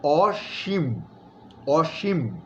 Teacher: অসীম শব্দটা বলতে গিয়ে আমরা দন্ত স লিখছি, কিন্তু উচ্চারণ করার সময় এটার শব্দের গুরুত্ববহতা, মানে অসীম, যে যার কোনো সীমা নাই, হ্যাঁ, সীমা পরিসীমা নাই, ওইটার গুরুত্ববহতাটা তৈরি করার জন্য আমরা কিন্তু উচ্চারণের সময় দন্তস্বকে আমরা তালব্য স হিসেবে উচ্চারণ করছি, তাহলে এটা হবে অসীম, অসীম, এবং ময়ের মধ্যে একটা ছোট্ট ধাক্কা আছে, অসীম।